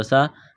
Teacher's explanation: سین میں سیٹی کی آواز پیدا کریں گے